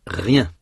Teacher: il y a un troisième son ye, représenté par la lettre i qui n'est pas vraiment une voyelle, mais qui n'est pas vraiment une consonne non plus. C'est un son qui est à la fois voyelle et consonne.